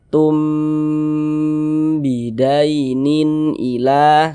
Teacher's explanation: Ya, hukumnya ikhfa syafawi seperti kotak nomor satu itu. Nah, maka kita baca berdengung. Yantum tum di bagian tumnya itu kita tahan, kita panjangkan sejenak.